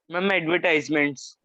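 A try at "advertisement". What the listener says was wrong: Yes, एडवर्टीजमेंट। एडवर्टाइजमेंट नहीं होता बेटा, एडवर्टीजमेंट।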